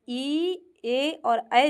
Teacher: जिनका उच्चारण हम करते समय जीभ के जो आगे का भाग होता है वो सक्रिय रहता है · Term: अग्र स्वर